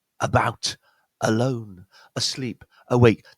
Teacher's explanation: These words where the A at the beginning is a schwa, what we find is that the stress point is always going to be on the second syllable.